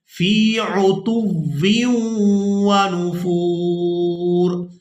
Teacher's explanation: یہاں پر ہم نے واو کو واو مشدد کے ساتھ ملانا ہے، تو آواز اس طرح سے ادا ہوگی فی عتو ونفور۔